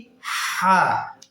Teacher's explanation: আগে আওয়াজ না বাতাস আগে হবে বাতাস পরবর্তীতে হবে আওয়াজ এটা কোথা থেকে উচ্চারণ হবে হলকের মধ্যম থেকে মাঝখান থেকে পর